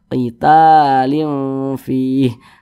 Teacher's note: Mad tabi'i panjangnya 2 harokat.